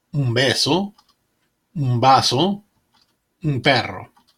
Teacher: Before the consonants B, P, and V, the N is pronounced like an M.